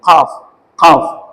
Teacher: இது வந்து காஃப் நல்லா அடிச்சு சொல்லணும் உள்நாக்கு உள்நாக்குல போய் நம்ம நாக்க அடிக்கணும்